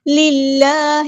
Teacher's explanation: ہوگا، قوۃ، آواز کو اٹھانا، ٹھیک ہے، قوۃ للہ جمیعا، للہ، اللہ کا جو لام ہے یہاں پہ باریک پڑھیں گے کہ اس سے پہلے کسرہ یعنی زیر آئی جیسے لام لل، ٹھیک ہے، تو باریک پڑھیں گے اسمائلی فیس